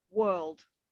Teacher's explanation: in British English, the R is very, very soft. So sometimes it's easier for students to actually produce the correct sound if they stress more on the R, like they do in America.